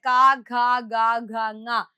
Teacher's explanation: ക ഖ ഗ ഘ ങ, കവർഗമെല്ലാം കണ്ഠ്യാക്ഷരങ്ങളാണ്. അതായത് ഇവരെ നമ്മൾ കണ്ഠത്തിൽ വെച്ച്, തൊണ്ടയിൽ വെച്ചിട്ടാണ് ഉച്ചരിക്കുന്നത്. നിങ്ങൾ ക എന്ന് പറയുമ്പോൾ നമ്മുടെ കൈ എടുത്ത് തൊണ്ടയിൽ ഒന്ന് വെച്ച് നോക്കിക്കഴിഞ്ഞാൽ അവിടെയാണ് നമുക്ക് വൈബ്രേഷൻ അനുഭവപ്പെടുന്നത്.